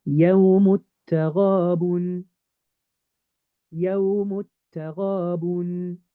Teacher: It now turns silent. So I'm really going to make the jump from the meme, skip the alif, skip the lam, go to the ta. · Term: idgham